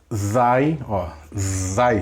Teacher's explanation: pronunciada quase que nos dentes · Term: dentais